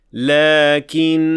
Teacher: When we keep on reciting, we say, لَكِنَّهُ اللَّهُ رَبِّي. But if we stop at the word, we would say, لَكِنَّا, with natural mad of 2 counts